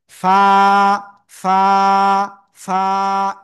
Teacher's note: সবাই খেয়াল করেন স্ক্রিনে, এই যে অক্ষরটা নিচে ঠোঁটের পেট, উপরে দুই দাঁতের আগায় লাগাবো, লাগিয়ে আমরা একালিপ টেনে উচ্চারণ করবো, হালকা বাতাস বের করবো মুখ দিয়ে। ফা, ফা, ফা, এরকম হাত লাগলে বাতাস কিন্তু বোঝা যাবে।